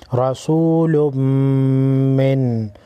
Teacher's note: را پر زبر ہے، موٹا پڑھیں گے، میم مشدد ہے، میم مشدد کو غنہ کر کے پڑھیں گے۔